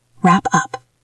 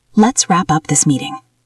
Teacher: Connect the P to the U.